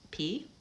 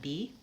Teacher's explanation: bilabial stops P and B but B is voiced